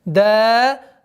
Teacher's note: Долгота в размере двух огласовок фатхи над буквой даль.